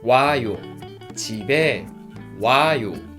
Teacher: vowel O and 아, they are combined together and become one diphthong 와. 와요.